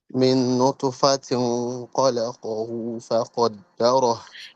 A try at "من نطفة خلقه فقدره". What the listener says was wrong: You are going to wow sound. Okay. So make it clear noon.